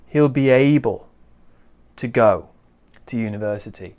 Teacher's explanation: we stress able and go